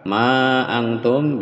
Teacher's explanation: ma antum bisa dua harokat atau bisa dipanjangkan sampai enam harokat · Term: mat jais mufasilnya